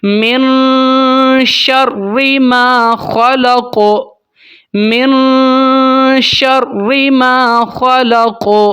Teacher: من شر، شین کو پھیلائیں گے، شین حروف تفشی میں سے ہے، اس کو پھیلاتے ہیں۔ ما خلق، خا کو موٹا، قاف کے اوپر قلقلہ ہوگا